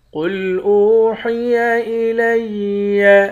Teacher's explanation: قاف کو موٹا پڑھیں گے، قاف موٹے حروف میں سے ہے۔ حمزے کو واو کے ساتھ ملا کر واو کو ایک الف کے مقدار کھینچیں گے، واو حروف مدہ ہے۔